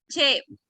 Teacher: Se produce una oclusión seguida de una africación. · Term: Africada